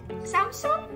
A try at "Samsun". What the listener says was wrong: No, Samsung. No, G. Yeah, Samsung. Samsung.